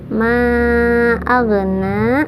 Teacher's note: jangan mantul karena bukan qalqalah tapi harus ngalir. Ma'agna, jangan ma'agna, jangan ya, tapi harus ngalir huruf ghain itu dari ujung tenggorokan. · tapi harus ngalir huruf ghain itu dari ujung tenggorokan. Kemudian na itu mad tabi'i karena ada fathah yang berdiri, jadi dibacanya panjang 2 harokat.